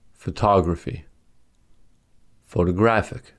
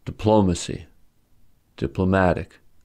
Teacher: The words photograph, diplomat, democrat, and monotone have stress on the first syllable. But when suffixes y or ic are added to the word, stress shifts to the second and third syllable respectively.